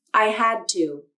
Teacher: the d was unreleased my tongue tip stayed up at the alveolar ridge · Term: unreleased d